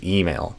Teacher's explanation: So instead of email, I would do email. So I would stress the E, and I would not do an I sound, I would do an E.